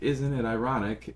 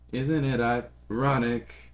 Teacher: She delays the ironic part.